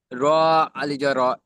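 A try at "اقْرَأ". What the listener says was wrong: আলিফ নয়, র হামজা জবর র।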